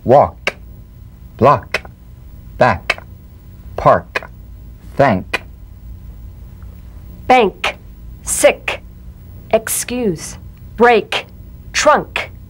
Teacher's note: the unvoiced tongue back plosive consonant with the tongue in the GE position let the tongue spring · With the tongue in the G position, let the tongue spring away in the soft, unvoiced click of the K drum beat. Feel a crisp tap and a pulsation in the back of the tongue.